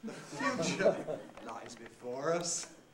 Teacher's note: Made emphatic with a high fall, and then the last lexical item gets a low rise.